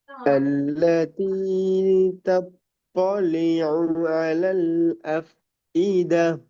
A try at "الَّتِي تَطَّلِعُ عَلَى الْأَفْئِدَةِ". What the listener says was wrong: அந்த தாக்கு போகக்கூடாது. அதான் பிள்ளை. முதலாவது சின்ன தே தான் வரும். தாக்கு போகக்கூடாது. التي تطلع சின்ன தேயில தான் போகணும். تطلع ஸ்டார்டிங் சின்ன தேய தெளிவாக உச்சரிக்கணும். அதுக்கு பிறகு பெரிய தாக்கு போகும்.